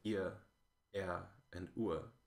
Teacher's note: all the R-flavored ones are no longer R-flavored, so you get ia, ea, and ua